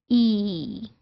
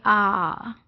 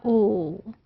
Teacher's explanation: There is no change in the position of the tongue. There is no gliding at all.